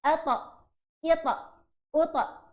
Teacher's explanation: Huruf ta pun sama juga dengan huruf dal. Bila dia mati akan terhasilnya sifat qalqalah.